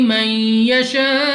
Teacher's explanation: نون ساکن کے بعد یا حروف یرملون میں سے ہے، ادغام کا قاعدہ ہے، غنہ کر کے پڑھا جائے گا. الف سے پہلے زبر الف مدہ ہے، مگر الف کے اوپر ہے مد، تو اس مد کی وجہ سے ہم نے اس کو 3 4 یا 5 سیکنڈ تک کھینچنا ہوگا.